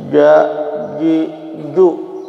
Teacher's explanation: Jadi tidak mengeluarkan nafas ketika kita baca hurufnya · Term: jahar